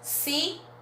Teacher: as palavras que terminam em L tem o mesmo som de u